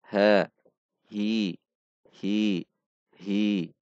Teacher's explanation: makhroj huruf ha itu pada pangkal tenggorokan itu tenggorokan yang paling bawah sama dengan makhroj Hamzah Kha namun tidak dibaca dari dada seperti · itu tenggorokan yang paling bawah sama dengan makhroj Hamzah Kha namun tidak dibaca dari dada seperti ha ha namun dibaca ha halus atau lembut he he he he dibaca dengan harakat kasrah yang sempurna I